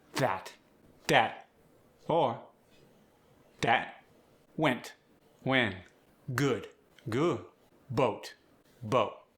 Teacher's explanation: The final T and D are softened or barely touched.